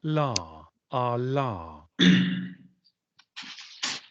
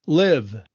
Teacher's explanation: el fonema alveolar aproximado